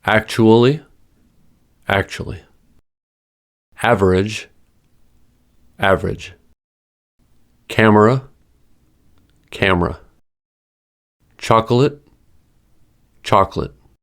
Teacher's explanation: These are words where syllable elision frequently happens.